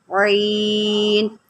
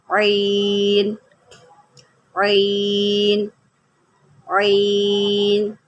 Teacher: عین جو ہے یہ جو ہے حروف حلقی میں سے ہے، اور عین کو حلق کے درمیان سے نکالتے ہیں۔ حلق کے درمیان سے نکالیں گے تو اس کا جو ہے وہ صحیح ساؤنڈ آئے گا، عین۔